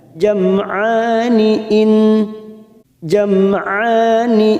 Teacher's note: fathah berdiri atau Alif kecil dua harakat kita panjangkan · nun yang bertasdid gunnah musaddadah kita tekan 3 harokat